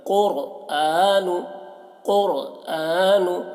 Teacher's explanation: قاف کو موٹا پڑھتے ہیں، را کو بھی موٹا کر کے